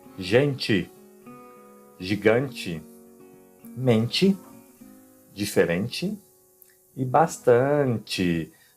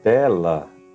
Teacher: Então a letra T, quando ela se encontrar com a vogal E ou ES, ela será pronunciada como ti ou tis, mas somente ao final das palavras, ok? Ao começo, no centro da palavra, será igual a espanhol.